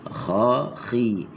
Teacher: Huruf kha ni dia makhrajnya adalah di halkum adnal halq. Halkum yang paling hampir dengan mulut.